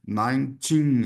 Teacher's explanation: acento também na última sílaba.